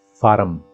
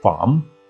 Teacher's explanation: most urdu speakers they add an extra schwa between these two consonants okay so form becomes faram now look at this word a